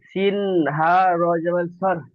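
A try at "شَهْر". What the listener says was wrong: না, শিন। তালু থেকে উচ্চারিত হয় শিন। সার হবে না, শাহ। শিনটি উচ্চারণ হচ্ছে না, শিনটি বেশি বেশি করে মশ করবেন।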